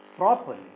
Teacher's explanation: when we divide this into 3 syllables, the first syllable is stressed. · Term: word stress